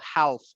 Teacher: No, no, we don't pronounce the L